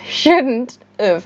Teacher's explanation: native speakers reduce this have to an of sound